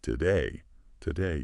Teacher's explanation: that first syllable to is unstressed. It often gets reduced to just to. The stress is all in the second syllable. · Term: syllable stress